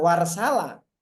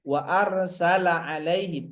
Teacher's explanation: Tapi warsala tidak boleh hilang, harus dibaca wa arsala alaihim, a-nya dibaca. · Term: hamzah koto